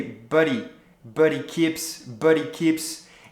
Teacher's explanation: the h-he is not really pronounced because of the link between but and he